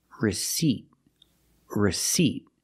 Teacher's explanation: you do not pronounce the P because it's silent · we're putting the stress on the second syllable